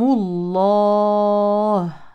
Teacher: فاذا وقفنا على الكلمه نقف على الهاء بالسكون نبين فيها الهمس والرخاوه وهذا الالف يمد عارض للسكون حركتين او اربع او ست حركات